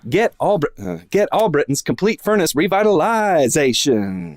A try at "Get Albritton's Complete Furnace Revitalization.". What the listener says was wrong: Not bad. Maybe a little more on the zation.